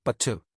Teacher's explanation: In British English, the T is often crisper, but to. And in some accents like Irish or Scottish, you might even hear it with a completely different musical rhythm. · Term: T sound